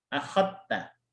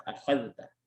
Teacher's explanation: Dipisah ya, akhadta. Tapi kalau riwayat Syu'bah, akhadta ini diidghamkan.